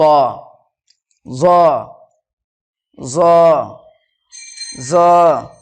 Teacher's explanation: জিহ্বার আগা এবং সামনের ওপরের দুই দাঁতের আগার সাথে লাগিয়ে উচ্চারিত হয় জ